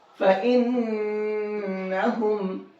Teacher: میں نے اس نون کے اندر غنہ کر کے پڑھا ہے، کیونکہ نون کے اوپر تشدید ہے